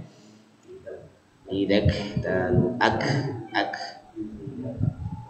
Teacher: ketika disukunkan ini seperti e mengeluarkan sedikit nafasnya begitu ketika disukunkan misalkan di sini jangan terlalu berlebihan se cukupnya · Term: sifat hamsnya